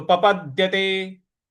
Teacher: प के बाद जो द है इस पर हमको थोड़ा सा बल लगाना है।